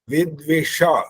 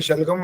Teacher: यह श बोलने पर मूर्धन्य बोलते इसको और दूसरा जो श है शलगम वाला उसमें गर्म हवा नहीं निकलती